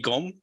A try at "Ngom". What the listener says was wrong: The N is almost silent, like you're saying chewing gum. gum. Ngom.